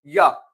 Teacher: य ओष्ठ नहीं दंत नहीं मूर्धन नहीं तालु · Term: अर्ध स्वर